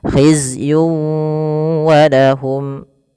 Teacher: ada tanwin pada lafal yun ketemu dengan waw, maka cara membacanya masukkan tanwin kepada huruf waw, tidak lagi khizyun walahum tapi langsung waw, khizyun walahum.